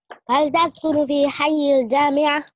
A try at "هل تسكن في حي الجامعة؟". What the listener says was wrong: Try to make the last vowel, please. The last.